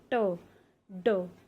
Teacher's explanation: ये हमारे जो अपर फ्रंट टीथ होता है उसके जस्ट पीछे के एरिया को बोला जाता है एल्वुलर रिजिड